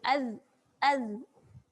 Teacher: Dia tertahan dekat hujung gigi atas. Dia tutup saluran angin. Sebab tu menghasilkan bunyi az. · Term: tak keluar angin